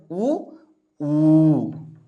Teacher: ತುಟಿಗಳಲ್ಲಿ ಹುಟ್ಟುವಂತಹ ಒಂದು ಅಕ್ಷರಗಳು ಅಂತ ಕರಿತಾ ಹೋಗ್ತೀವಿ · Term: ಓಷ್ಟ್ಯಾಕ್ಷರಗಳು